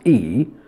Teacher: when i pronounce e the tongue is high not low or middle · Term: long e